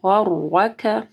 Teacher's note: غین کو موٹا پڑھنا ہے، را کے اوپر زبر ہے، ٹھیک ہے، تو را موٹی پڑھی جائے گی، اور کاف کو جو ہے نرم پڑھنا ہے.